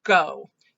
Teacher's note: there's no consonant after the vowel now so that makes it an open syllable and the vowel says its name